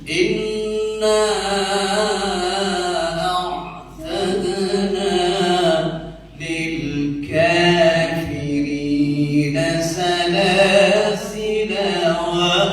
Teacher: Kalau kita baca dalam sistem wasal, nyambung. Itu jadinya yang tadinya panjang menjadi kasar, dipendekkan.